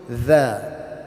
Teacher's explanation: we have to pronounce this softly lightly with the tongue between our teeth